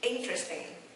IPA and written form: ˈɪn.trəs.tɪŋ (Interesting)